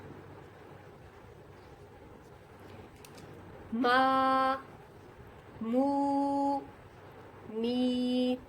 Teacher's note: یہ تینوں جو مدہ ہیں، حروف مدہ ہیں، یہ تینوں ادا ہو رہے ہیں منہ کے خالی حصے سے